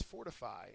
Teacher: the first syllable is accented